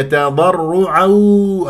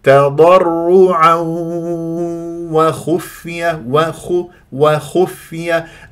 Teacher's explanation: ادغام بغنه ما تجعلها واو صافيه